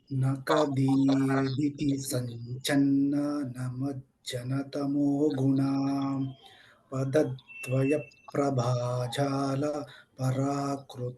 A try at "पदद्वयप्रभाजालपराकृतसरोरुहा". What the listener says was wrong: No pause after Padadvaya Prabhajala. Continuous.